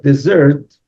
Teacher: Desert, when the stress is on the second syllable, desert means to leave